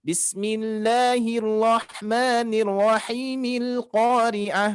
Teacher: Maka hamzah wasalnya di sini dia tidak akan berfungsi lagi.